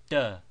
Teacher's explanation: with tip of tongue placed on back of teeth instead of on Front Ridge of roof of mouth